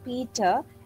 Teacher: But in case of Peter, it is aspirated P sound.